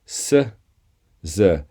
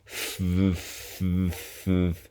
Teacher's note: it's the same mouth position we simply have the voice box either turned on or off